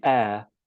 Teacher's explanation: it's a homophone with the word 'air', ok? So you don't pronounce the 'h'